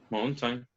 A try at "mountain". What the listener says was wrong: Okay, actually the letter T is not pronounced. You say mountains. And instead of saying the letter T, it's like you swallow the sound. So you say instead of saying t, t, t.